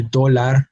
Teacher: they do not have their emphasis on the last syllable but on the second to last syllable